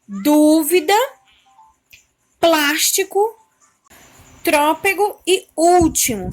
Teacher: todas elas têm como sílaba tônica a antepenúltima sílaba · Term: proparoxítona